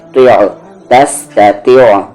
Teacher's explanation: یہ عین سائلنٹ ہے بولنے میں